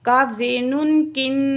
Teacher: کاف کی زیر کو نون تشدید سے ملائیں گے اور نون میں غنہ کر کے پڑھیں گے۔ کاف زیر نون کن، اس طرح غنہ کریں گے۔